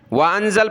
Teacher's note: وانزل پر سانس ٹوٹا تو لام کو ہم نے سکون دے دیا